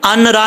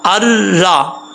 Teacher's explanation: حمزہ کو را سے کنیکٹ کریں گے، نون کو چھوڑ دیں گے، ان را نہیں پڑھیں گے، حمزہ را زبر ار، را زبر را، ار را۔